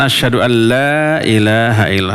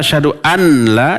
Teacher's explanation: memasukkan bunyi huruf nun yang mati ke dalam huruf lam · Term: idgham